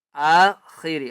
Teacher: آخری خا کو موٹا کر کے پڑھنا ہے